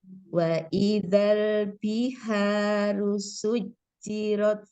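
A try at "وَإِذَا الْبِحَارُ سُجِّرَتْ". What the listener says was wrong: Ini kadang-kadang harus diingatkan nih ro tafkhim. Ro berharokat fathah gitu ya.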